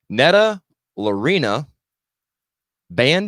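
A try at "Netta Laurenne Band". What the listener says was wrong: Lorena, L-A-U-R.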